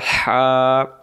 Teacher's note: লম্বা হা হলকের মধ্য থেকে শোষো করে পড়তে হয় হা